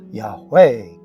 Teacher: The name is comprised of 4 vowels, and enunciating a hu in the middle is adding a consonant, and Hebrew rules of grammar dictate that the emphasis is on the final syllable